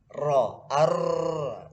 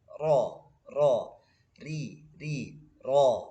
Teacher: Jadi ro ini takrir, bergetar. Ro, ar, tapi nggak boleh sampai bergetar banyak ya.